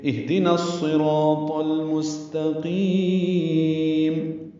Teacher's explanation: میم ساکن پہ وقف کریں گے اور میم ساکن پہ اظہار شفوی ہوگا، یہ مد عارض للسکون بنے گی، لمبا کریں گے · المستقیم میں اظہار ہے، لام کو ظاہر کرنا ہے، لام پہ قلقلہ نہیں کرنا۔ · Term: اظہار قمری